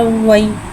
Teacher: या साकिन है, या साकिन से पहले ज़बर आ रहा है, यालीन हो रहा है, या लिहाजा यालीन को बगैर खींचे बगैर झटका दिए नरमी से मारूफ पढ़ेंगे